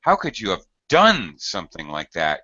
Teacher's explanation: You're really going to highlight or stress done.